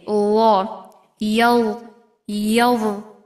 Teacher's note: ও, বর উচ্চারণের ল। স্থান হলো জিহ্বার আগা সামনের উপরে, দুই দাঁতের আগার সঙ্গে লাগিয়ে